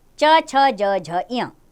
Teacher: तालव्य इसका स्थान है तालु के नीचे।